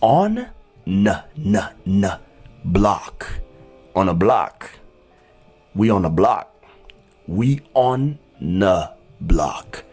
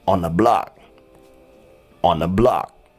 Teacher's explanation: So the TH becomes n. It creates the n sound.